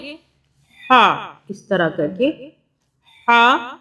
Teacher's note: अब ये जो हा है इसको हम हलक से बोलेंगे हा, इस तरह करके हा खड़ा ज़ेर ही, जैसा कि ऊपर बताया है उसी तरह हलक से इसको अदा करेंगे।